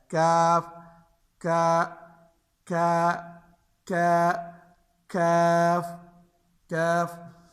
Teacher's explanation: اسی سے تھوڑا سا آگے یہ زبان کی جڑ سے جہاں سے ہم نے قاف ادا کیا, اس سے تھوڑا سا منہ کی طرف, اس سے کاف ادا ہوتا ہے